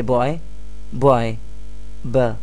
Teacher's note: the initial sound does not come from the throat but it is produced using your lips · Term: consonant sound